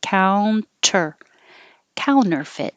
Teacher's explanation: the t is after the n and the unstressed syllable so once your tongue goes to the end position counter you don't have to release the t counter counterfeit and you can hold the t at the end